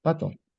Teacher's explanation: l'accent paisa a également tendance à aspirer les consonnes P, T et K lorsqu'il se trouve au début d'un mot. Par exemple, le mot pato se prononce pato.